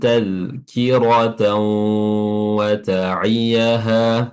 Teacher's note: taz tiib lakum tkiratan waaha tan di sini fathatain bertemu dengan wau ya hukumnya berbeda dengan tadi fathatain bertemu dengan ro ya di sini fathatainatain bertemu dengan wau idgham juga tapi di sini bighunah ya dengan disertai dengan gunah atau dengung Ya, tan itu diidgamkan atau dimasukkan langsung ke huruf wau sehingga huruf huruf ee tanwinnya sudah tidak terlafazkan dan wunnya jadi bertasydid.